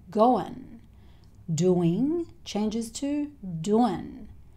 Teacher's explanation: It's quite common to change the ing sound to the n sound. So the schwa sound and then the n sound. So going changes to goin'.